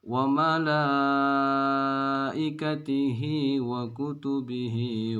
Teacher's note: ini Ini bertemu dengan Hamzah nah ini namanya madu wajib muttasil mad wajib muttasil tuh panjangnya enam harokat wajib dibaca 6